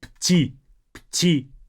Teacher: Both dull sounds. Make sure that you don't say птица, as if there's like an extra vowel there. They are pronounced together.